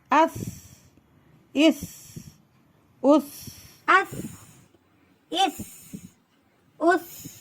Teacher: ஹம்ஸ் காற்றை வெளிப்படுத்தும் நல்லா மஹ்ரத்ல வச்சு கொஞ்ச நேரம் வச்சு கூட காற்றை வெளிப்படுத்தி ராஹத்தா சொல்லணும்